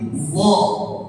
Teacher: kalau huruf dha, lidah kita naikin. Kita dekatkan ke arah langit jadi dha